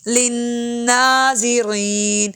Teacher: لن میں شد پہ غنہ ہوگا